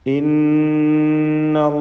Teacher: നൂൻ മുശദ്ദദ, ഷദ്ദ് നൽകപ്പെട്ട നൂനിനെ മണിക്കുക.